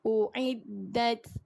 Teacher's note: Keluarkan angin pada huruf ta yang mati.